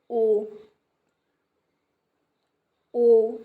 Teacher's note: जिन स्वरों के उच्चारण में जो ओठ हैं व्रतमुखी या गोलाकार होते हैं